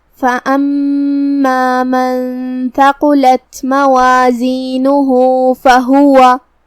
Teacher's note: کلمت موازینہ یہاں جو کہ نون پہ پیش ہے تو اس کا دھیان رہے، یہاں حرف الہا پہ یہ علامہ ہے الٹا پیش، مطلب اگر ہم یہ آیت کو اگلی آیت کے ساتھ پڑھے تو یہاں حکم ہوگا مد صلہ صغرا، ہم اپنی آواز 2 مد کے برابر لمبی کریں گے۔